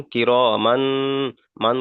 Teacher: তাই তানবিনের আওয়াজকে নাকে তুলে একালিপ পরিমাণ গণনা করে পড়তে হবে